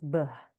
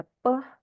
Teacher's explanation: kita tahu Beh itu voiced Ya bersuara pe itu voiceless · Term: voice onset time